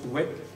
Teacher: Le maintien de la prononciation du V latin qui se prononce oué.